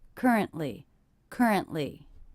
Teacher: I heard currently with a stop. That's a stop T.